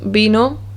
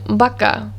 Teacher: b and v are identical in sound they both make the b sound